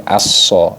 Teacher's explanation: diidgam syamsiahkan dimasukkan al-nya al-nya hilang jadi aso nah seperti itu kemudian saofirnya Sod ni mirip dengan